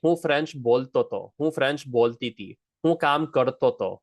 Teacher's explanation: these ha's are going to often be swallowed